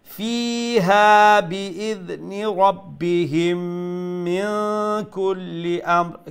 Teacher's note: Fi is going to be stretched one alif long. Then ha one alif long.